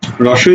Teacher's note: রসই আমাদের ঠোঁটটা চ্যাপ্টা থাকছে এ আমাদের ঠোঁটটা চ্যাপটা থাকছে এ আমাদের ঠোঁটটা চ্যাপটা থাকছে আমি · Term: প্রশ্রিত ধ্বনি